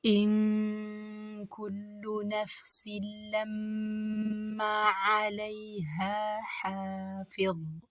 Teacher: ኑን ሳኪናዋ ካፍ ስለመጣባት ኢኽፋ ነው የምትደረገው፣ በግልጽ አትነበብም ማለት ነው። እንሸሽጋታለን። ኢንኩሉ ስንል ደግሞ ላም ዶማ ከሸድ ጋር ናት፣ ጠበቅ እናደርጋታለን።